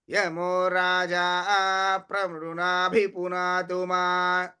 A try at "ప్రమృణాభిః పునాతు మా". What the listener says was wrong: మృణాభిపునాతుమా విసర్గలు స్పష్టంగా ఉండాలి.